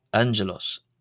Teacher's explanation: the first G is pronounced as an N-N and the second G is pronounced as a J sound as in the letter Jeanja.